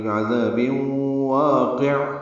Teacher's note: تنوین کے بعد واو آنے کی وجہ سے بے میں ادغام ہو رہا ہے، با کو واو سے مدغم کر دیں گے، یعنی ملا دیں گے۔ · عین ساکن وسط حلق سے ادا ہوگا، قاف کو عین سے ملا دیں گے، عین پہ اظہار ہوگا وقفاً، یعنی انہیں عین پہ ہلے نہیں، کلکلا نہ ہو۔